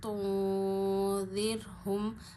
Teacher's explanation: را ساکن سے پیچھے زیر ہے تو را کو باریک پڑھیں گے